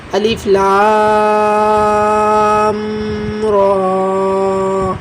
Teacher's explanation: را کو پر پڑھنا ہے کیونکہ را کے اوپر کھڑی زبر ہے۔